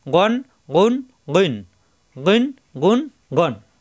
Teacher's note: গ মোটা হরফ কন্ঠনালি শেষ অংশ থেকে